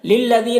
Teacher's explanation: للذین، یہاں پر یا مدہ ہے، ایک الف کے برابر کھینچیں گے